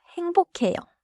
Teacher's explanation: in natural pronunciation it sounds close to 행보캐요. The 기역 and 히읗 combine into a 키읔-like sound.